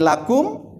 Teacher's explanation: itu adalah izhar mim Ya itu jangan ditahan-tahan